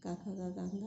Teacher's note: काका गागा अंगा कंठ का जीवा के मध्य भाग से स्पर्श होता है